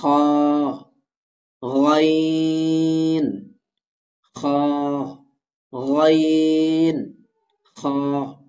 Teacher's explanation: এই যে এই গয়িন এবং এটাকে বলা হয় খ। তো হলকের শেষ ভাগ হতে উচ্চারিত হয় গয়িন খ